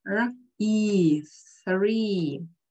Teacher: Обрати внимание, как язык мы высунули, зажали между передними зубами.